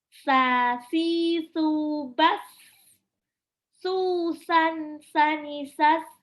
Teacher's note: Ini sa, ujung lidah seperti mau digigit.